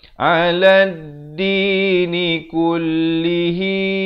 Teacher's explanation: hi dipanjangkan 2 harakat, maksilah qasirah